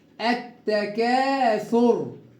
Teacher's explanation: اللام شمسيه اللي بعدها التاء مشدده